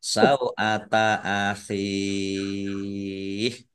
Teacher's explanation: Sau'ata akhih, hak kasroh ya sukun mat tobi'i, tetapi karena di akhir kalimah atau karena bertemu dengan huruf terakhir yang dibaca sukun karena wakof, maka menjadi mat arid lis sukun. Dibaca panjang boleh 6, boleh 4, boleh 2 harokat.